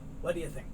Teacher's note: you have the t and the d so you're just going to hear one